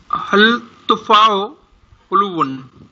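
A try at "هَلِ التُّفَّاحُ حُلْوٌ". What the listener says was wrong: हाँ, इसमें आप इसको हल ना पढ़ें, इसे हलित तुफा, हल लाम के नीचे जेर आ गया। हलित तुफा,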